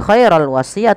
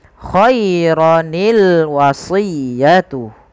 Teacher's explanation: sukun yang pertama dikasrohkan sehingga berubah menjadi khaironi. Sehingga kita membaca lafal khairon al-wasiyah bukan lagi khairul wasiyah atau khairon al-wasiyah, tapi dibaca dengan khaironil wasiyatu. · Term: iltiqa'us sakinain